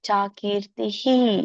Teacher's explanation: ತಿ ಹೇಳುವಾಗ ಮುಂದೆ ಇರುವಂತ ವಿಸರ್ಗ ಕೂಡ ಇ ಆಗುತ್ತೆ